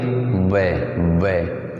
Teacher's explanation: वै का उच्चारण स्थान बहुत बार पूछा गया है, तो वै जो है अपन जब बोलेंगे वै, ऐसे जो होठ हैं वो सिकुड़ेंगे, फिर दंतों के साथ स्पर्श करेंगे, वै वै। इसे द्विओष्ठ ध्वनि भी कहा जाता है। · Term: दंतोष्ठ